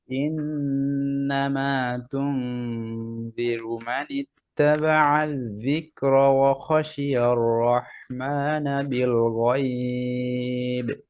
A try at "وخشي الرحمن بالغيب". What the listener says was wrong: হ্যাঁ খটা আর একটু ক্লিয়ার করেন وخشي الرحمن بالغيب এখানে খেয়াল করেন যে ওয়াওটা পাতলা খ মোটা কেন ও খ না وخشي وخشي الرحمن بالغيب